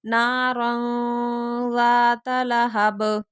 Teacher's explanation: تنوین کے بعد زال آ رہے ہیں تو یہاں اخفا ہوگا